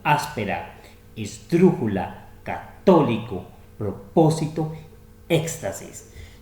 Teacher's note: Tienen el acento en la antepenúltima sílaba, llevan tilde. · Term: esdrújulas